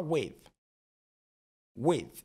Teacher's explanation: Il est presque muet, hein, le the.